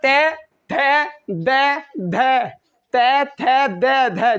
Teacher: तय बोलते समय हमारी जो जीभ है वो एक बार टकरा के जाएगी, किससे, दांतों से। बिगर दांतों से टकराए आप तय नहीं बोल सकते।